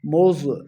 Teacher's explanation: زوا کو موٹا پڑھنا ہے